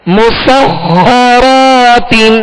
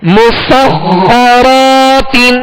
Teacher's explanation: خا حروف مستعلیہ میں سے، لہذا پر یعنی موٹا کریں گے، اور خا پر تشدید ہے لہذا دوہرا پڑھیں گے، 2 مرتبہ پڑھیں گے.